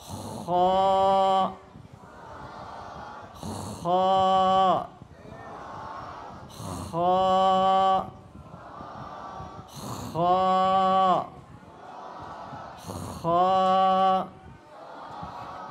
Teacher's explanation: যেভাবে গলা সাফ করতে আওয়াজ হয়, এইভাবে আওয়াজ করলে এই খটার শুদ্ধ উচ্চারণ হয়ে যাবে।